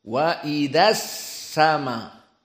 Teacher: Idza sama langsung kepada sin. Alif lamnya tidak dibaca. Maka sin ditasdidkan setelahnya. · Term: alif lam asyamsiyah